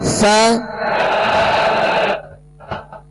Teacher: सा को नरमी से पढ़ेंगे, इसमें सीटी की आवाज बिल्कुल पैदा ना हो, नरमी से अदा करेंगे